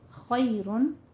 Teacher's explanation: خی یالین ہے، خو کو پور پڑھیں گے. خیرن آگے میم آ رہا ہے تو یہاں پہ ہم ادغام مال غنہ کر دیں گے، کیونکہ نون ساکن اور نون تنوین کے بعد جب حروف یرملون میں سے کچھ بھی حرف آ جاتے ہیں 6 حروف میں سے تو وہاں پہ غنہ کیا جاتا ہے.